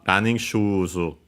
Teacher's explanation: We keep the accent of the second word, part of the compound, so on the shoe.